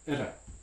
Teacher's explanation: it makes a different sound it's a tap sound or flap sound